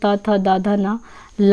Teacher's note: दांत और जीभ के स्पर्श से बोले जाने वाले वर्ण दंत ध्वनि के तहत आते हैं